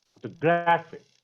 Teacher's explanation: In photographic, we stress the penultimate syllable.